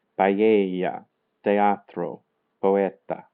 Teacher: E and u are weak ones. When the two strong vowels come together, they are pronounced separately.